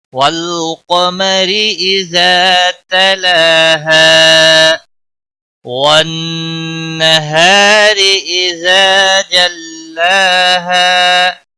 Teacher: نون مشدد ہے، گنہ کے ساتھ پڑھیں گے، نون مشدد پر گنہ ہوگا، گنہ کی مقدار 1 الف کے برابر ہوتی ہے۔